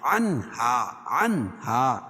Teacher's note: نون ساکن کے بعد حروف علقی کے 6 حرفوں میں سے ہا ہے تو یہاں ظاہر کر کے پڑھیں گے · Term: اظہار حلقی